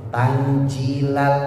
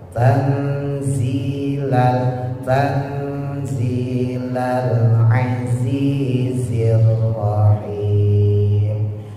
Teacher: Nah, kenapa orang ucap zai jadi jim? Karena ujung lidahnya naik ke atas. Ya. Jangan ditaruh di atas, taruh di bawah.